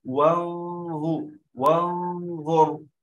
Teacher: لاحظوا يا جماعة، أنا الآن وأنا أقرأ عندما قلت مثلا الآن لا أتيت بنون واضحة ولا أتيت بالظاء واضحة، قلت وانظر وانظر.